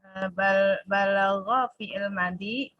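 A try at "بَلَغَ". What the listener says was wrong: Balagho, nggak usah pakai tasydid. Waqad balagho.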